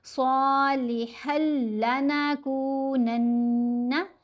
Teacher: ہا کو لام سے ملائیں گے، یہ یرملون کا ادغام ہے، لیکن یہاں پر ادغام کرتے ہوئے غنہ نہیں کریں گے۔